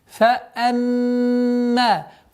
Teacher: Здесь назализация в размере 2 огласовок, удержание. فأما. После назализации долгота в размере 2 огласовок, фатха удлиняем.